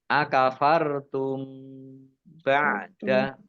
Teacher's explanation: mim sukun bertemu dengan huruf ba, bacaan ikhfa syafawi, dibaca samar-samar